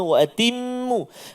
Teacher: Mim yang bersabdu, wajibal gunnah, 2 harakat. Jangan laju.